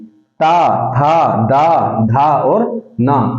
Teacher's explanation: अब इसमें देखिए दंत इसको क्यों कहा गया है, आपकी जो जीभ होगी इनके उच्चारण के समय दांत को टच करेगी, ता, था, दा, धा और ना, ऊपर वाले दांत के ऊपर वाले ये जो दांत है इनको इसके पीछे की तरफ आपकी जीभ टच करती है, इसे बोलते हैं दंत, ठीक है।